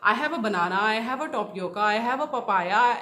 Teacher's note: So first I will raise my tone and then I will go for the falling tone